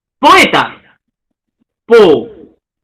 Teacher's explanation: hiato simple, no hay acentuación, dos vocales abiertas se separan